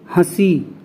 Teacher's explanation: नाक और मुख दोनों से हवा निकलती है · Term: अनुनासिक